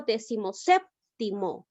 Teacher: la mayor fuerza de voz recae en la sílaba sep. Es una palabra esdrújula, por tal motivo la llego a tildar.